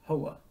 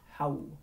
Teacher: However, because in this context, he is going to be in the enclitic form that is joined to a preceding word, either phonetically, graphically, semantically, it has some relationship with the preceding word. So we're going to not actually pronounce that last vowel, so it's just going to be hau.